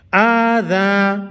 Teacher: دا الف مد دے یو الف مقدار بے اگدو یعنی یو سیکنڈ